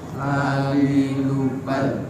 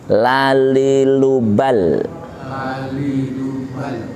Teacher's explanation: Ini punggung ujung lidah menyentuh gusi makrotnya ya. Makrotnya lam itu punggung ujung lidah menyentuh gusi depan